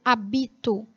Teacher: esta habito é paroxítona sílaba tônica penúltima · E habito, que tecnicamente tem a mesma escrita, mas a diferença se dá pela sílaba tônica, que não é mais a antepenúltima, e sim a penúltima.